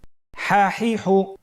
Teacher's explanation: পরবর্তী হরফ হা। আমরা জানি হার উচ্চারণ কোথা থেকে হয়? কণ্ঠনালীর মধ্যখান হতে।